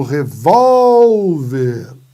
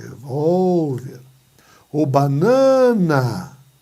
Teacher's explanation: É a penúltima sílaba que é mais forte. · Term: paroxítonas